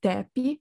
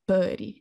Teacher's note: these always surface with a final epenthetic vowel. So we get the root tep, which surfaces as tepi in isolation, and the root bud, which means tree, which always surfaces as puri in isolation.